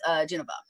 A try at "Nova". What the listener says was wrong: Geneva? is that right? Just Nova, no G.